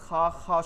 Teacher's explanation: হলকের শেষ মানে গলার শেষ, এবং তার ওইখান থেকে যে বের হয় সাউন্ডটা ওইখানে তালু, একদম শেষ তালু, এখানে একটা ঘষা খায় , যেমন ধরেন আপনার কফ ফালানোর সময় বা গলায় কিছু বাজলে